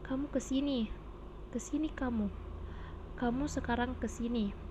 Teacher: kalimat perintah atau imperatif, ditandai dengan pola intonasi datar tinggi